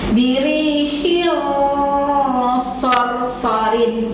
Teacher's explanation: Oke, saya berikan contoh caranya begini. Birihil harus ditebalkan bunyinya, ikhfa-nya, dengungnya, gitu ya. Dan harus disertai dengan gunnah.